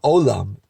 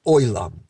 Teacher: You have that yud, that Y stuck in everywhere.